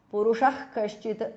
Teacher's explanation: Purushaha. Visarga changes to jihva mulya.